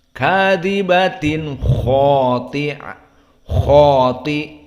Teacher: Maka di sini kha dikentalkan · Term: huruf al-mufakhamah